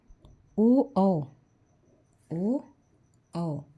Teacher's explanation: ओ औ का उच्चारण स्थान कंठ और ओठ दोनों से मिलकर होता है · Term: कंठोष्ठ वर्ण